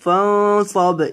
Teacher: یہاں نون کے اوپر گنہ ہوگا صاد موٹا ہوگا اور با کو ہلا کر پڑھیں گے